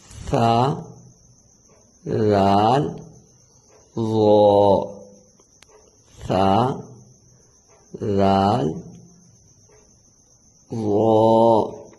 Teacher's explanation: تو لسا جو ہے یہ بھی عربی زبان کا لفظ ہے، اس کے معنی جو ہے وہ مسوڑے ہیں، مسوڑے کے ہیں، چونکہ جو ان کا مخرج ہے وہ مسوڑوں کے پاس اندرونی جگہ جو کنارے ہیں وہاں سے ہوتا ہے، اس لیے یہ حروف لسویہ کہتے ہیں۔ تو مخرج جب آپ نے زبان کی نوک جو ہے اوپر کے جو سامنے والے دانت ہیں اس کے سرے سے جب آپ ٹچ کریں گے تو یہ 3 حروف ادا ہوں گے